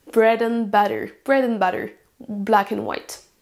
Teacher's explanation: Vous entendez à peine ce mot and, qu'on va donc réduire avec la forme un. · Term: forme réduite